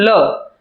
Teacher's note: જીભનો ભાગ વળે છે અને હવા જમણી અને ડાબી બાજુ બંને બાજુથી બહાર નીકળે છે જેને આપણે કહીશું લ. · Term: પાશ્વિક વ્યંજન